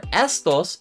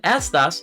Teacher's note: the pronunciation of all of these words stresses that first syllable